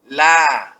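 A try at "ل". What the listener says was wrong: Ya, la. Tipiskan, Pak ya, jangan la. Karena huruf la huruf tipis.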